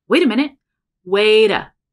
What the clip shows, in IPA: weyda